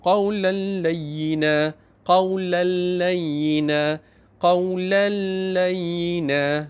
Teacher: Apabila tanwin bertemu dengan huruf lam, maka idgham bila gunnah. Dia tersembunyi tapi tidak berdengung.